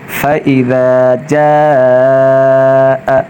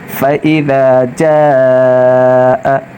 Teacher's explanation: فإذا، جیم الف مد زبر جا، حمزہ زبر ا، فإذا جاء، جا پر مد کریں گے، 3 یا 5 الف کھینچ کر پڑھیں گے